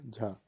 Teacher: तालव्य महाप्राण घोष वर्ण है